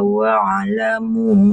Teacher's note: waamu itu dibaca empat harakat itu. Jangan dua harakat.